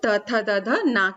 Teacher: ये दांत की सहायता से यानी आगे ऊपर वाले दांतों की सहायता से बोले जाते हैं, इसीलिए इसलिए इनको हम दंत व्यंजन भी कहते हैं।